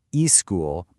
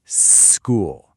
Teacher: The whole trick is to avoid adding that eh sound before the word. So instead, you start by making a long, hissing s sound, just like a snake. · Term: snake drill